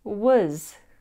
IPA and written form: wəz (was)